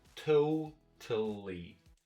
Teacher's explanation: So stress goes on the first syllable, no stress here, and a little bit stress here.